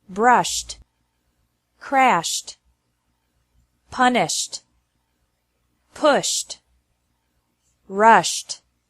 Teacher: e d is pronounced like T after verbs ending with an sh sound